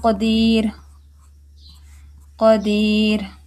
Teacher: را ساکن ما قبل یا ساکن ہے اور اس سے پہلے زیر ہے، اس کو بھی باریک پڑھیں گے